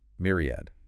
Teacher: Stress on the first syllable. 3 syllables.